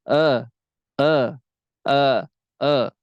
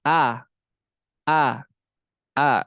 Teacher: pada kalimat audu huruf hamzah pada kalimat audu Kenapa muraqaqoh yaitu Hamzah di sini adalah harus tarqik jadi jangan kita baca e e e e tapi a a